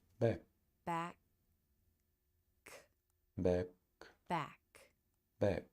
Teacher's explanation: back back back back here you can see the tongue position the back of the tongue reaches up to touch the soft palate which is closed the tip of the tongue can remain forward lightly touching the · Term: k sound